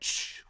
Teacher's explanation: a /ʧ/ is just a /ʃ/ with a /t/ on it